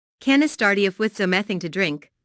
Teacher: Notice how the question starts with can. Since this is a yes/no question, the intonation rises at the end.